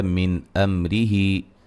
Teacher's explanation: من امرہ نون ساکن کا اظہار ہے، میم ساکن کا اظہار ہے